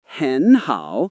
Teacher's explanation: Again, the first tone becomes a rising sound in natural conversation.